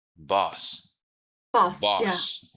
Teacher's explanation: You see, there's a little rounding, lips rounding. In British English, the lips is rounded.